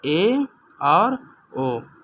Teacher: जानेंगे कि किसे कहते हैं तो अर्ध सम्र स्वर कहते हैं जिन स्वरों के उच्चारण में मुख द्वार आधा बंद रहता है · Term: अर्ध संवृत स्वर